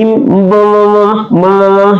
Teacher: Kemudian ada mim teman-teman ya, ada mim kembali adalah asyafatain, kemudian dia juga termasuk al-khaisum. Jadi kalau kita sebut mim pasti dia di bibir dan dia juga keluar di hidung